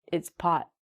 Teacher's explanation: So when we say the word pot, we don't say the T.